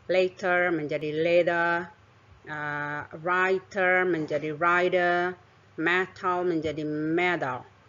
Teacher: vokal atau dalam bahasa Inggris disebut dengan intervocalic Kemudian yang kedua stres pada kata tersebut jatuh pada suku kata sebelum bunyi t tersebut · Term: Flap